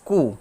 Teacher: not pronounce ko as ko rather utering it as ku wherein the u sound is pronounced with glottal stop and not rounded